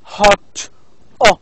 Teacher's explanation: the sound in o, hot, can be also described as low back. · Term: low back vowel